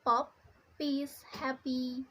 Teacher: For a bilabial sounds, the active articulator is the bottom lip, and the passive articulator is the top lip. So the sounds is between the lips.